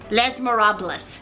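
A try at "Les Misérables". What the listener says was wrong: Okay, so you don't say the S on les.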